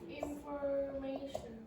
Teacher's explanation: the TI very often in English is pronounced like a sh